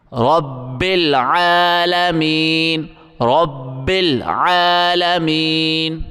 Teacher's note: رب عین کو گلے سے زور لگا کے نکالیں گے اور عین کو ایک الف کی مقدار کھینچیں گے